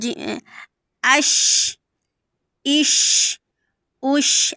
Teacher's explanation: یہ شین کی آواز پھیل رہی ہے